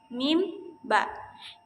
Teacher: Bunyi ini dapat diucapkan ketika bibir atas dan bibir bawah itu sejajar. Lalu menutup bibir tersebut, kemudian diletupkan. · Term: bunyi bilabial